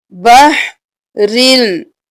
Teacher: ہم بحرن نہیں کریں گے، را کو لام کے ساتھ ملائیں گے